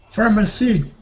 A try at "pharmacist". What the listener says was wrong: Okay, now remember there is an ST at the end, so the word is pharmacist.